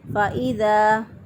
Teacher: ہے، تو ہم یہاں پہ مد کریں گے، زا زبر الف زا کے اوپر ہم جو ہے وہ مد کریں گے، ایک الف کے برابر اس کو لمبا کریں گے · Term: الف مدہ